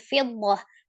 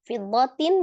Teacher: Tasdid di huruf dad, kemudian ada huruf ta marbutoh yang ketika disukunkan dia menjadi huruf ha besar ya. Ya sukun, jadi fiddah.